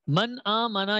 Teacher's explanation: تو نون ساکن اور نون تنوین کو بغیر غنہ کیے جلدی پڑھیں گے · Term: اظہار